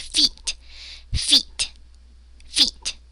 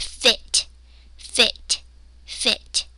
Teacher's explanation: So can you feel in your cheeks when you say feet? Your muscles are tense, but when you say fit, they're more relaxed. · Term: tense vowel